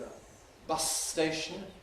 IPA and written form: ə ˈbʌs steɪʃn̩ (a bus station)